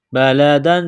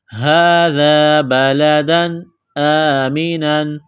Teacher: تنوین کے بعد حمزہ ہے، حروف حلقی ہے تو تنوین پر غنہ نہیں کریں گے